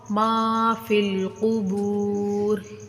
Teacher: افلا یعلم اذا بعثر ما فی القبور، ادھر سے ماں کو کھینچیں گے، فا کو لام کے ساتھ ملا کر پڑھیں گے. یا خالی ہے یہ نہیں پڑھی جائے گی.